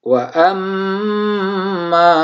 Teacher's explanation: di dalam mim kita tahan sampai 2 harokat sehingga menghasilkan dengung ya pada hidung kita